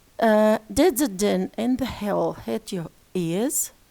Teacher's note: we can describe E as a vowel, which is front and close. Front and close vowel, short vowel, as you see.